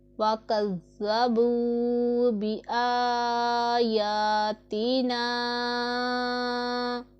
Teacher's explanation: سیٹی کی آواز بالکل بھی نہیں آنی چاہیے ذال میں، نہیں تو ذال اور زا میں کوئی فرق نہیں رہ جائے گا۔ تو ذال میں سیٹی کی آواز بالکل بھی نہیں نکالتے۔